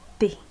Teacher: se articulan tocando con la punta de la lengua los dientes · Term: dental